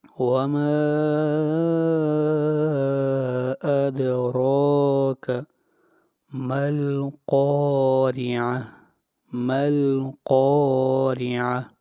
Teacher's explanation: وما ادراک، وما کے اوپر مد کریں گے، اور اس مد کو مد منفصل کہتے ہیں، اور اس کی مقدار 3 الف کے برابر ہے۔ ادراک، دال کے اوپر قلقلہ ہوگا، آواز کو ہلائیں گے